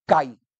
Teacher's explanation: Essa letra I, que ficou junta da vogal, ela tem uma força de pronúncia atenuada, menor. Isso é o que se chama semivogal.